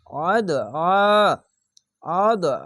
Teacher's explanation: আইনটি কে একটু মোটা করে গলা চিপে পড়বেন